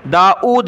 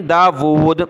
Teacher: اس کو داود پڑھنا ہے، داؤد نہیں پڑھنا، حمزہ کے ساتھ نہیں